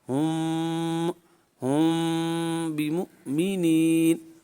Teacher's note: تو میم ساکنہ کے بعد چونکہ با موجود ہے لہذا یہاں پر اخفاء شفوی والا قاعدہ جاری ہوگا۔ میم ساکنہ کو با کے مخرج میں چھپا کر غنہ کر کے پڑھیں گے، ٹھیک ہے، اور اس کے آواز جو ہے نا ناک کے بانسے میں لے جائیں گے